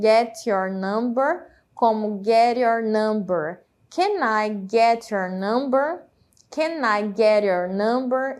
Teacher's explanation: o T no final das palavras, às vezes ele tem esse som de R